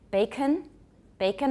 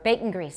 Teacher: then I've got a syllabic nasal I've got a glottal stop in there